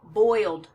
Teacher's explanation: Boil becomes boiled in the past tense. An L is a voiced sound, so it sounds like boiled.